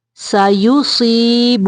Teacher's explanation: رسالتہ، سایو سین کو باریک پڑھنا ہے۔ سایو صاد کی آواز کو موٹا کریں گے۔